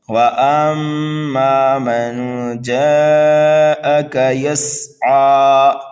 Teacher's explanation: میم مشدد ہے، اما کے اندر جو ہے ہم غنہ کریں گے